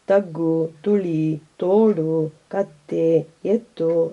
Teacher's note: ನಾಲಿಗೆಯ ತುದಿಯನ್ನು ಹಲ್ಲಿನ ಹಿಂಬದಿಯಲ್ಲಿ ಇರಿಸಿ ಅಲ್ಲೇ ಉಸಿರನ್ನೊಮ್ಮೆ ತಡೆ ಹಿಡಿದು ಬಿಟ್ಟಾಗ ತ ಎಂಬ ಉಲಿ ಹೊರಡುತ್ತದೆ. ತಗ್ಗು, ತುಳಿ, ತೋಡು, ಕತ್ತೆ, ಎತ್ತು ಮೊದಲಾದ ಪದಗಳಲ್ಲಿ ಈ ಉಲಿ ಕಾಣಿಸುತ್ತದೆ.